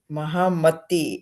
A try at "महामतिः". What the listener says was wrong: No, you said परिवर्तनं न भवति, then why are you making it दीर्घ? मतिः.